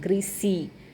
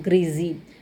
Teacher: in American English, especially the northern dialect, they use s sound